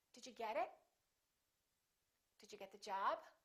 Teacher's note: Because job is a noun. So we reduce pronouns and we stress nouns.